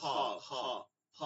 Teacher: এই গলার মধ্যে একটা নালী আছে, যেটা থেকে আমরা কথা বলি, কণ্ঠনালী। এই কণ্ঠনালীর মাঝখান দিয়ে বাতাসটা চাপ দিয়ে বের করে নিয়ে আসতে হবে।